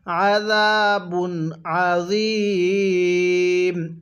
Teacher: এই জ এর মধ্যে আমরা তিন আলিফ টেনে পড়বো